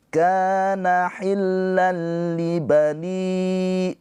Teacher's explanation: Ketika tanwin atau nun sukun bertemu dengan lam, hukumnya idgham bila ghunnah. Nah, cara bacanya tanwinnya ini dileburkan ke huruf lam ya. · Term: idgham bila ghunah